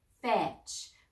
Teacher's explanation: Remember, I don't hear the T